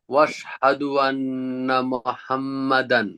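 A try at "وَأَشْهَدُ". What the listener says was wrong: ওয়াশহাদু বলা যাবে না, ওয়া আশহাদু।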